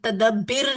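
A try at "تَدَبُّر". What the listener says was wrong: बुर नहीं जी, बर। तदब्बर।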